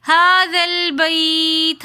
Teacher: بیت میں یا ساکن اور سے پہلے زبر تو یائلین ہے، یائلین کو ہم بغیر کھینچے نرمی کے ساتھ پڑھیں گے، آگے تا ساکن ہے تو وقف کی حالت میں پڑھیں گے۔